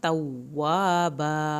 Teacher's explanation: वाव की शत पे भी दबाव डालें, अलिफ को पूरा अदा करें और आखिर में भी अलिफ पूरी अदा होगी।